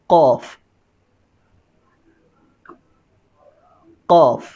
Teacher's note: गोश्त का टुकड़ा एक मुंह के आखिर पे लटका होता है। ज़ुबान को जब उसके साथ लगाएंगे ना, तो अदा होगा